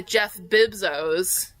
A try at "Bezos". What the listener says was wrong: You put in a whole consonant there.